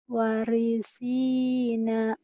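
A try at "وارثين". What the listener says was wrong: Wanya panjang.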